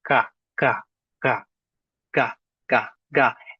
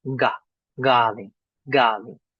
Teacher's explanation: it almost turns to a g, but that g is made in the back of the throat.